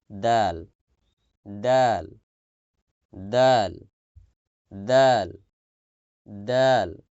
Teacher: জিহ্বার আগা সামনের উপরে দুই দাঁতের গোড়ার সঙ্গে লাগিয়ে দাল দাল দাল দাল দাল দেখেন ও জিহ্বার আগাকে সামনের উপরে